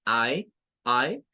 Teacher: es un sonido corto para la vocal A, es la unión prácticamente de la A y la E, pero se dice de una manera muy rápida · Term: sonido AE